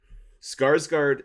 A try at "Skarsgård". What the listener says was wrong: I think the K is silent, I believe. I think it's Sarsgaard. But I could be wrong. just the way I think I've heard it, and it when I see it, it makes sense to me that you don't say the K.